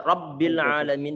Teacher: Cukup digandakan suara huruf ba-nya yang ditasydidkan. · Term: tasdid